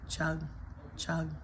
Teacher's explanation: In the word chug, it's technically a stressed schwa, but if you were just gonna do it in a reduced way, chug, chug, versus chug.